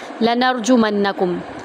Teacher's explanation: لَنَرْجُمَنَّکُمْ، لام کو ہم آرام سے پڑھیں گے، نون کو را میں داخل کریں گے، را کو پر پڑھیں گے، جیم کو آرام سے پڑھیں گے، میم کو نون کے اندر داخل کریں گے اور غنہ کریں گے، نون کو آرام سے پڑھیں گے۔